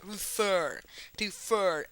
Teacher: Refer está acentuada, o sea, tiene una sílaba tónica en la última. La última sílaba es tónica, es que no se dice refer, no, se dice refer, refer.